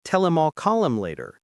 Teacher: The H in him drops out completely. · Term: connected speech